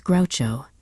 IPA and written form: ˈɡraʊtʃoʊ (Groucho)